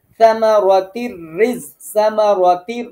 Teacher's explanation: সামারাতির র উপরে তাসদিদ, তাতে জের, এজন্য রটা বারিক হবে।